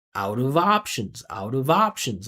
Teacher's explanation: you can't hear where each one word starts and one word stops. It's all one sound connected.